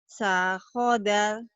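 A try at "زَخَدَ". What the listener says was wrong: Zahoda. Nah, bukan dal lagi ya. Kalau udah berbaris, dalnya hilang L-nya. Zahoda.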